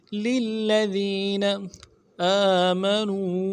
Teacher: حمزہ کے اوپر کھڑا زبر ہے، ایک الف دال میں کھینچیں گے کھڑا زبر کو